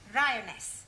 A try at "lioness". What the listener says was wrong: No, l. You're not saying it right.